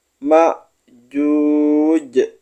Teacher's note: huruf Jim disukunkan dimatikan lalu dipantulkan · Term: Qalqalah